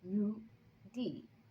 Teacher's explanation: lu is 4th tone, and d is 3rd tone